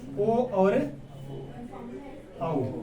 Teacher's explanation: मुंह जो होगा हमारा वो एक पूरा वृत्त की तरह होगा, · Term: वृत्ताकार स्वर